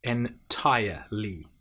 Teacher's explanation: We then have entirely, so aya, tire, aya, entirely. Now make sure you don't pronounce the r in entire. It's not entirely, it's entirely.